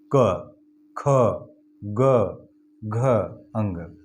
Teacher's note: ये सभी जितने भी क वर्ग के अक्षर हैं और ये मात्रा है अ, आ, ह, विसर्ग, ए, ये कंठ से बोले जाने वाले व्यंजन के उच्चारण स्थान है। इन्हें कंठ से बोला, जैसे हमने बोला क, तो ये कंठ में जो गले से इसका उच्चारण हो रहा है